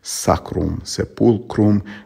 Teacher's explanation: the m is silent and the vowel before is nasalized